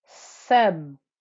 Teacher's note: I'm joining to the ba because the ba has the shadda, and I keep my lips pressed through that first ba, because remember, ba with shadda means there's two bas sat in the same place. The first ba has the sukoon, which is why I can join from the scene, and then the second ba has the kasra that you see underneath it.